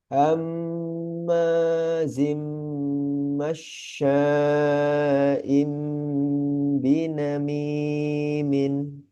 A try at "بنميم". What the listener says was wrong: Eh, binamimin. Dua, dua harokatnya kelebihan sedikit tadi.